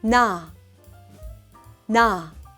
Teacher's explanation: touch the back of your upper front teeth with the tip of your tongue make a nasal sound where the air flows through your nose